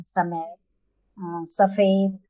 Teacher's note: दंत सा मतलब दांत पर जी जिह्वा टच करेगी, तो साफ सफाई ऐसे उच्चारण।